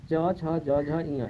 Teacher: च वर्ग का उच्चारण तालु से होता है